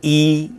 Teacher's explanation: When you say a, the tongue is at a low position. When we say e, the tongue is at the highest position